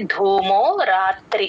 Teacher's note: ధూ కి మహాప్రాణం ఉంది గమనించండి ధూమో రాత్రి రాత్రి అని ప్లేన్ గా కాకుండా రా కి త ని